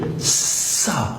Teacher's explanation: اس کو نرم رکھنا ہے اور یہ سیٹی کی آواز کے بغیر ادا نہیں ہوگا